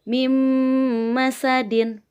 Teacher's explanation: Ada huruf nun mati menghadapi huruf mim. Nah, kita masukkan huruf nun matinya ke huruf mim. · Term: idgham biguna